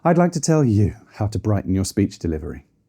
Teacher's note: I'd like to tell you how to brighten your speech delivery. If we pitch down, it can sound like we're disciplining or exhausted from saying it.